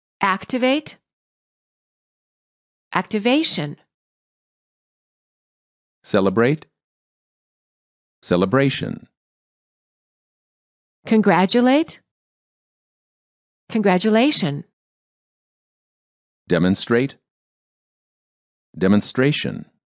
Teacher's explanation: verbs ending with ate stress the first syllable nouns ending with t-i-o-n stress the second syllable before the suffix